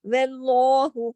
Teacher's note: اس کو موٹا نہیں کرنا، اس کو ایسے نہیں پڑھنا، ٹھیک ہے. جو جیسا ہے وہ ویسا پڑھا جائے گا، صرف لام موٹا ہوگا.